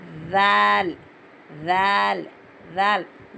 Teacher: ज़बान बाहर निकाल के ऊपर के दांतों के थोड़ा सा एक चावल के दाने जितनी ज़बान बाहर निकाल के